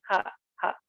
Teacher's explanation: yang betul dari tenggorokan paling bawah itu disekitaran jagona tapi bawahnya sedikit jadi punya seperti ini ha